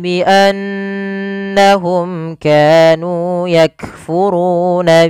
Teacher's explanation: mim mati bertemu Kaf di sini Tertinggal ada hukum tajwid berupa bacaan izhar syafawi yaitu suara mimnya harus dibaca dengan jelas tanpa ada penahanan